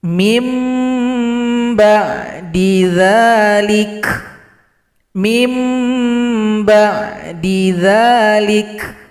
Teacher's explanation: tanda ini berjumpa dengan satu huruf yang bernama huruf ba maka dibaca dengan mengganti vokal huruf nun menjadi huruf mim serta didengungkan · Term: iqlab